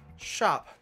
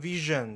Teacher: 龈后有丝擦音也是▁KK▁音标里面就有的▁，sharp▁的▁sh▁跟▁vision▁的▁z